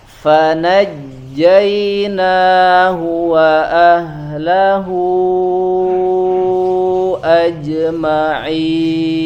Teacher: suaranya tidak pecah ya, atau tidak becek ketika membacakan huruf jim di sini.